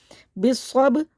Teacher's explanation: با ساکن پہ قلقلہ کریں گے یعنی کہ آواز پلٹ کے واپس آئے گی